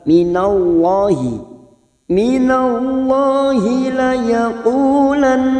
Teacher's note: lam Jalal yang didahului fathah kita baca atau tebal